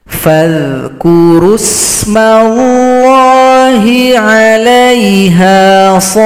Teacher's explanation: Panjangkan dulu, baru ditasydidkan. Kemudian huruf fa yang kita tasydidkan ini disukunkan. Jadi cukup ditekan saja bunyinya.